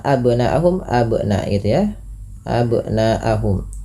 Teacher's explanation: Kemudian panjangkan bunyi suara na, yang dimana di sini na-nya dipanjangkan 4 atau 5 harakat yang kita hukumi dengan bacaan mad wajib muttasil.